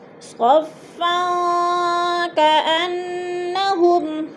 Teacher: آگے کاف حروف اخفا میں سے آگے ہے تو ادھر اخفا ہوگا، آواز کو ناک میں چھپا کر پڑھیں گے · کأنہ کی نون مشدد ہے، سختی سے جما کر پڑھیں گے